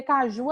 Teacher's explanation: caju a sílaba tônica o ju